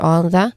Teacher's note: We blend them together on the, where on here has a short sound, and it uses a voiced th sound with a relaxed vowel sound at the end